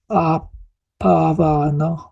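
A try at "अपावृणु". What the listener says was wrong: No, the R with a dot is Ri. Apavrinu.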